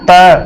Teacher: देखो जिह्वा आपकी कहां टच कर रही है? दांतों को, तो ये दंते है